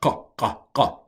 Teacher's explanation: This is transliterated with a Q, but it's a ko, roof of the mouth, ko. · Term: Kof